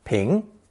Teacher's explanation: a very common Chinese character pronounced second tone ping